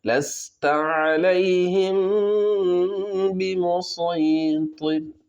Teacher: मीम साकिन के बाद बा है, तो यहाँ पर गुन्ना करके पढ़ेंगे।